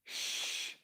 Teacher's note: Step 2, round your lips, pull your tongue back, sh, and make the sh sound, which is a lower pitched sound